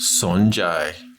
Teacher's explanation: Son, rising tone, and jai, flat tone.